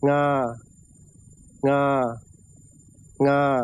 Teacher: In English, this sound only occurs at the end of syllables, but in Thai, it can also be at the beginning. งางางา This sound is called a velar nasal. You use the back part of your tongue to make contact rather than the tip.